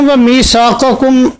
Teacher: میثاقکم اس کو بھی ہم اظہار سے پڑھیں گے امام سوسی کی قرات میں